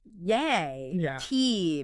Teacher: saying it with a doubtful, maybe drawn out, disbelieving tone, like yay, T means I don't believe you at all. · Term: sarcastic tone